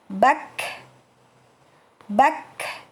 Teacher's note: Untuk kaf sukun disertai udara yang keluar, ya. Bak. Jadi jangan ditahan bak, ya, tapi keluarkan udara.